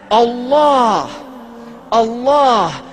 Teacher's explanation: It begins with a hamza, which is at the deepest articulation of the throat. And this is where the name of Allah is emanating from the point in which human vocalization is possible.